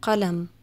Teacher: Then there's qaf, as in the word qalam, pen. This is like a K, but pronounced further back in your throat.